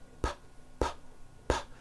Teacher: Are your vocal cords vibrating when you're saying the sound P, p, p, p? You feeling any vibrations in your throat? No, your vocal cords are not producing a sound.